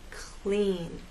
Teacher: when L follows P or K, it actually begins voiceless. Your sound starts as you drop your tongue down to make E in clean, clean.